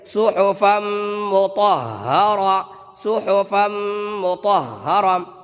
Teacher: گول تا اگر کہیں آ جائے اور گول تا پر آپ کو رکنا ہے تو وہ اب تا نہیں رہے گا بلکہ وہ تا اب ہا بن جائے گا، لہٰذا یہ تا اب ہا کی شکل اختیار کر لیں گے، لہٰذا اس کو پڑھیں گے صحفا مطہرہ، صحفا مطہرہ۔